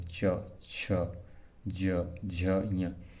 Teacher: इसके उच्चारण में कहीं थोड़ा सा देखना आप, प्राणवायु हल्का सा गर्म और संघर्ष करते हुए निकलता है, च छ ज झ य, इसलिए अब हिंदी में इसको स्पर्श संघर्षी माना गया है।